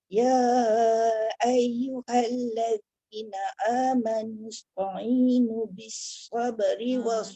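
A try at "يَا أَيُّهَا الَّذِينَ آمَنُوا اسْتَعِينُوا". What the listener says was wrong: tak boleh pendek. Satu lagi amanusta'i jangan ta'i. Ya ayyuhalladzina amanusta'inu. Panjang. Dia jangan ta'i. Amanusta jangan to. ta'i. Ta.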